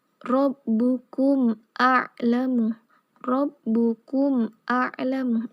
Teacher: Jadi harus dibaca jelas karena mim mati bertemu alif, sedangkan alif adalah salah satu dari huruf idhar syafawi.